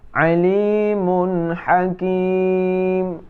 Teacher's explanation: Alimun hakim, nun mati bertemu dengan ha, ya, tidak berdengung.